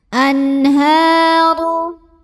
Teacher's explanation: An, ada idhar halqi karena ada nun sukun yang bertemu dengan huruf tenggorokan yaitu ha. Maka cara baca nun sukunnya dibunyikan dengan jelas, bunyi n-nya ya, tidak ditahan. Anharu. Ha mad asli atau mad tabi'i, karena ada baris fathah tegak di atas huruf ha.